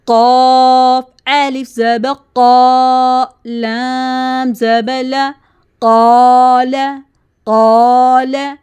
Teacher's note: قاف heavy sound میں سے ہے، اس کے ساتھ الف مد کی ساؤنڈ بھی ہیوی ہوگی۔